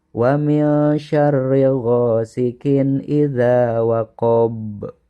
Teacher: Waqab, nah ini waqab di akhir kalimat ada huruf ba, dan ba juga merupakan salah satu huruf qalqalah. Jadi ketika ba-nya menjadi sukun, maka membacanya harus dipantulkan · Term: qalqalah kubro